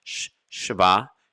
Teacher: it's hardly pronounced at all and this shava can either be a short e sound called a shiva na which is a moving sound where you just move from one consonant to the next with a little bit of sound